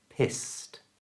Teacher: Notice the ED at the end of pissed is pronounced as a T sound